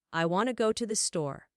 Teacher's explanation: the stressed words would be want, go and store while I tothe the would be pronounced more quickly and lightly. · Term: sentence stress